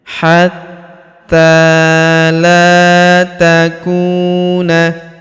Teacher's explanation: Huruf la kita panjangkan dua harakat karena terdapat alif di depannya.